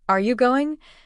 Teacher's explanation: Your voice rises at the end because it's a question. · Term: inonation